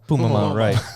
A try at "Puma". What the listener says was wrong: Which is like too many M's.